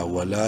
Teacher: ایک الف کے برابر لام کو لمبا کریں گے